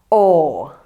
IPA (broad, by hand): ɔ: